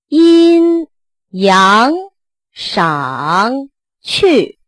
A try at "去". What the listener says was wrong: 这 个 去 没 挂 住 ， 它 不 够 高 了 。 去 。